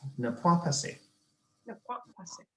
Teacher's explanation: Don't insert the glottal stop. That is very Germanic.